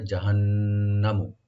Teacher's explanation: নুন মুসাদ্দাদ এখানে ওয়াজিব গুন্না, এখানে কোনো টান হবে না, শুধু গুন্না হবে , জাহান্নামু। খালিদান, খাটাকে ডিপ করে একালিফ টানবেন, লি বলবো, দালের